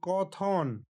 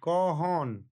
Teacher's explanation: এখানে থ মহাপ্রাণ ধ্বনি, এই থ মহাপ্রাণ ধ্বনি দুই স্বরের মাঝে দুর্বল হয়ে হ এ রূপান্তরিত হয়েছে